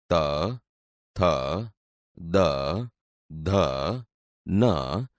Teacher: વ્યંજન બોલતી વખતે જીભ દાંતને અડે છે આથી તે દંત્ય વ્યંજન છે